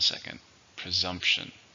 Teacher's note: How many syllables are in presumption? 3. Stress on the second.